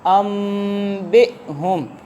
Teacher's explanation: حمزہ ساکنہ کو ہمیشہ جھٹکا دے کے پڑھتے ہیں، اس لیے ہم نے پڑھا انبئہم، ہم اس کو انبئہم نہیں پڑھیں گے، جھٹکا دے کر پڑھیں گے۔